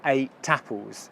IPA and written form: eɪ. ˈta. p(ə)lz (Ate + apples)